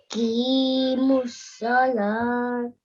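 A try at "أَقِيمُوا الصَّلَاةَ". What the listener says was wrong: You read it correctly, just a bit of pronunciation. the qaf is read from your throat. Qi, qi. Keep practicing to pronounce the qaf from your throat. It's a thick letter.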